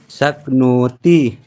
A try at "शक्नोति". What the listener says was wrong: ह्रस्व दीर्घ है, तो जो दीर्घ है उसको खींचिए ना, शक्नोति।